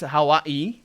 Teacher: It's supposed to have a glottal stop at the apostrophe.